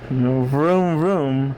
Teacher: its V sound is similar to an F sound in a way. It's the fricative sort of V